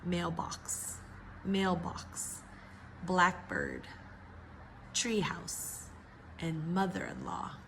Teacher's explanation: Of course, it's a compound word, but because it's a noun, we know that the first syllable is the one that's stressed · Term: stress in compound nouns